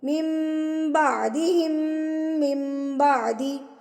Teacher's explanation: نون ساکن کے بعد با آ گیا تو نون ساکن کے آواز کو ہم نے میم میں تبدیل کر دیا، بدل دیا، تو یہاں پر اقلاب ہو رہا ہے.